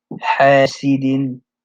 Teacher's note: And then the word حَاسِدٍ, it's a heavy, it's like a heavy breathing sound for the ha, like you're heavily breathing